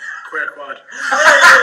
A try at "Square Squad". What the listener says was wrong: No, put the S's in there, King. Come on.